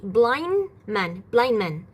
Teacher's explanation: We don't say the d.